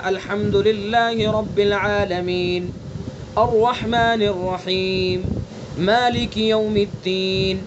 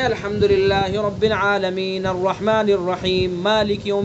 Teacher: تو ہم عالمین پر رکے، جتنی دیر میں عادتاً ایک سانس لیتے ہیں اتنی دیر رکنا ہے۔ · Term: وقف